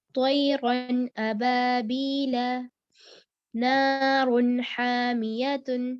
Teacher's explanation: غنہ کرنا نہیں ہے یعنی کہ نیزل ساؤنڈ نہیں ہونی چاہیے پڑھتے وقت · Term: اظہار